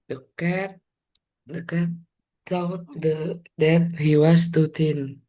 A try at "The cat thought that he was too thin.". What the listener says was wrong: Oh, T semua nih, lupa ujung lidahnya. Pelan-pelan. Ini thought. Bunyinya thought. U-nya nggak bunyi. Jadi ini U-nya nggak bunyi, bukan thought, tapi thought that he was too thin. Too thin. Ini kebawa-bawa sama T dari too, thin-nya jadi T. Too thin.